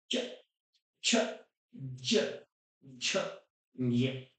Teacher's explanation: च वर्ग के सभी अक्षरों की आवाज आती है तालू से · च, आप जब भी बोलेंगे तो बीच वाला हिस्सा है वो जाके ऊपर टकराएगा तालु से। हमारे मुंह का जो ऊपरी हिस्सा है उसमें जाके जीभ का मध्य भाग टकराएगा।